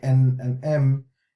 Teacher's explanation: And the articulation point for this is the al-khayshum, that emits the ghunna sound, the ghunna sound. So al-khayshum is the nasal passage which emits the ghunna sound, and that's of the noon and the mim, which emits the n and m, which is the same as in English.